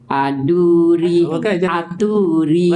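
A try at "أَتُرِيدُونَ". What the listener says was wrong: Jangan tu jangan panjang.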